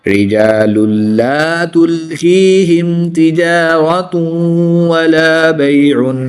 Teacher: दो पेश की तनवीन के बाद वाव हरूफ यरमालून में से है तो यहाँ पर इदगाम माल गुन्ना होगा यानी गुन्ना करके पढ़ेंगे